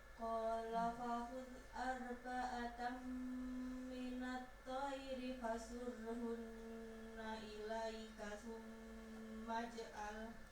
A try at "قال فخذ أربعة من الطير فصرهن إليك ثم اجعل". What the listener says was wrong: Huruf kha-nya kurang mantap. Fakhul.